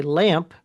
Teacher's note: And by the way, that explains my example before about how it's possible to say lamp because M is a bilabial consonant and the P is also a bilabial consonant